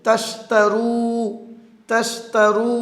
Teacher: তাশতারু তাশতারু, তা এখানে 2টি তা হরফ রয়েছে, দুটোটাই হামসের হরফ, পড়ার সময় হামস বাতাস বের করে পড়বেন।